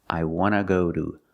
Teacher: want to can be pronounced wanna with no t in it